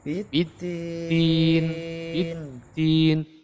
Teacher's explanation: Ara'aital ladzi yukadzibu Biddin, biddin. Dal itu masuk kategori al-jahr. Jadi dia tidak berdesis, bukan al-hams ya.